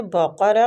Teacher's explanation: قاف مستعلیہ حروف ہے، پور پڑھیں گے، واو مد کی وجہ سے تھوڑا سا کھینچیں گے بھی۔